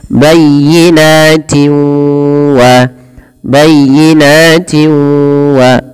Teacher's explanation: cara membacanya memasukkan suara tanwinnya kepada huruf waw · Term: idgham bi gunnah